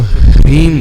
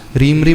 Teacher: कैसा बना है? ह हलंत, आधा ह, आधा र, ई स्वर है और अनुस्वार है म। तो ह्रीम बोलना, रीम रीम नहीं बोलना, रीम रीम नहीं, पहले ह का उच्चारण।